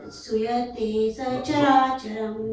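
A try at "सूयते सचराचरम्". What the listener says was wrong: Do a long oo. Suyate sacharacharam. Suyate sacharacharam. And no pausing after the sa, because sa is a short syllable. Suyate sacha, not like that. Suyate sacharacharam.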